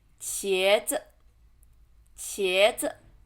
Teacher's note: 茄 second tone, 子 light tone